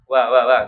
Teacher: mengucapkan kita wa itu sebenarnya dia keluarnya dari tengah-tengah bibir wa ya. Wa itu jadi dia tengah-tengah bibir. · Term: wau